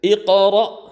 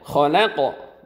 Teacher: Kalau iqra sambil mengalir, maka durasinya lebih berkurang. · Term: qalqalah sughranya